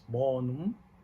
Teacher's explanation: So in Latin, we have a word like bonum, that you might hear that the M is a nasal sound because it's bonum. The mouth is closed, but I make the sound, so it's coming out from my nose.